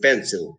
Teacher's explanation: the pencil, it receives the accent in the first syllable